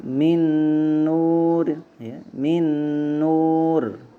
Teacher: Maka nun pertama, ya, itu dilebur ke nun kedua, ya. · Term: idgham bi gunnah